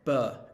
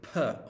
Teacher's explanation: bur and per they're both made with your lips they're both bilabial consonants two lips together but bur is voiced and per is unvoiced